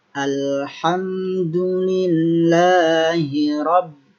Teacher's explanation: di ba juga ada tasydid, harus ada tekanan. Tekanan di huruf lam, kemudian di huruf ba.